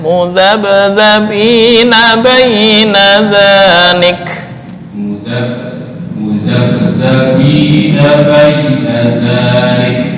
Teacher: untuk ba, usahakan jangan apa istilahnya, nyembur angin. Kalau nyembur angin tisu sampai terbang, itu kurang pas.